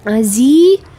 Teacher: Azi, azi itu mad tabi'i atau mad asli pada huruf zai ya, bertemu, yang berkasrah bertemu dengan ya sukun, panjangnya 2 harokat